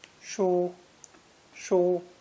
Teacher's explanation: This character is pronounced with a high and flat first tone.